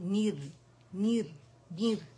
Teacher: रॉ सुकून से पहले हमारे पास कसरा आ रही है, तो रॉ बारीक पड़ी जाएगी , क्योंकि ये ओरिजिनल कसरा है, ठीक है, इस लफ्ज का